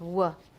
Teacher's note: it's the same w but it has two places of articulation